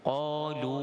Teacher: Sifat qaf isti'la dan dia tertutup. Jadi huruf qaf ini tebal lah. Qalu, dua harakat dengan mad asli.